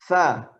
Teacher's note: ujung lidah ketemu dengan ujung gigi seri atas